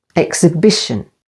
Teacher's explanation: the stress is on the third syllable